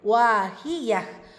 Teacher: வாவில் அலிஃப் மத்தா 2 ஹரக்கத் அளவு நீட்டம் கொடுக்கணும்.